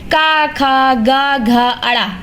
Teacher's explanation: जैसा कि आप लोग यहां देख रहे हैं क वर्ग क, ख, ग, घ, ण ये कंठ कंठ की सहायता से बोले जाते हैं।